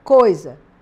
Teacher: Eu tenho a palavra coisa, o OI está formando um ditongo. O O é uma vogal, o I uma semivogal.